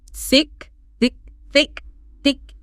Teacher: slowly push air out around your tongue as you start the word like. Feel that a little bit of air, that friction.